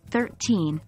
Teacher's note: teen numbers are generally stressed on the second syllable